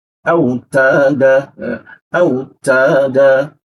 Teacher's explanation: huruf ta. Ada desis tipis ya. Nah, ini sifat huruf ta kita perkuat juga.